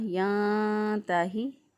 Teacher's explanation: نون ساکن کی آواز کو چھپاتے ہوئے ہم نے اس کو ادا کیا۔